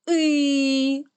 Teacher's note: наступний звук и голосний наголошений позначаємо кружечком